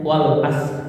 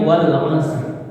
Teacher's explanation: Kalau kita tipis kadang-kadang enggak itu ada yang baca tanpa r nya, wal as. Harusnya kan wal asr ada ra nya tipis.